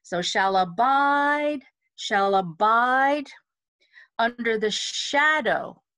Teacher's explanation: Because of the interval, it's going to be very natural for you to emphasize the bide.